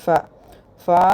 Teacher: കീഴ്ചുണ്ടിന്റെ ഉൾഭാഗവും മേൽവരിയിലെ മുൻപല്ലുകളുടെ അറ്റവും